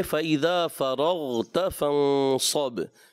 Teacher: با میں کلکلہ ہوگا، غین میں کلکلہ نہیں ہوگا